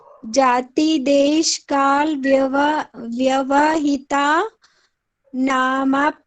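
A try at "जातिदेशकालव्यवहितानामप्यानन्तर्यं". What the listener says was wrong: तर्यम, ये ना एक डॉट दिया, तर्यम बोलेंगे इसे।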